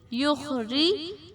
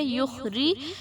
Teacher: اس کو موٹا نہیں پڑھیں گے, را کو, اس کے نیچے زیر ہے تو اس لیے ہم اس کو موٹا نہیں کریں گے.